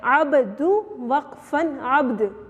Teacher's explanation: عبد جب ہم عبد کریں گے تو با کے اوپر بھی قلقلہ آ رہا ہے اور دال کے اوپر بھی قلقلہ آ رہا ہے. دال کے اوپر وقف کے بعد دیکھیے چھوٹا سا جزم آ گیا نا، جب ہم اس کو وقف کریں گے تو اس کے اوپر جزم آ جائے گا، عبد وقفن عبد.